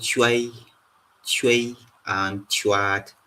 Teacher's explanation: And then we have the palate labial form for the T sound